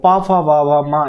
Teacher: पा, फा, वा, भा, मा यानी पा वर्ग है वो हमारे ओष्ठ से उच्चारित होते हैं